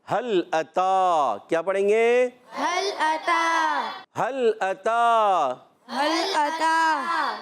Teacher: تا پر کھڑا زبر ہے تا کو ایک الف کھینچنا ہے